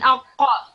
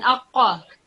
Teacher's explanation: your furthermost part of the tongue would touch the opposite portion of the hard palate. So when you're trying to say this word, the passage of throat would be blocked. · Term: Qaf